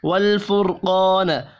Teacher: را ساکن سے پچھلے حرف کے اوپر پیش ہے، را کو پر پڑھیں گے · قاف حروف مستعلیہ ہے، قاف کو بھی پر پڑھنا ہے